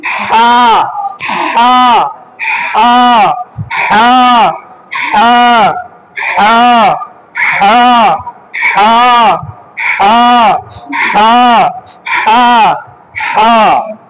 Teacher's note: এটা হচ্ছে কণ্ঠনালী মধ্যখান চাপ দিয়ে, কণ্ঠনালীর মধ্যখান, মধ্যখানে চাপ দিয়ে, কণ্ঠনালীর মধ্যখানে চাপ দিয়ে আমাদেরকে উচ্চারণ করতে হবে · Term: হ জাতীয়